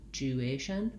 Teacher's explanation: I really go right from the J to the U, juation, but I like to write it with the word you because that helps people get that gliding sound, graduation.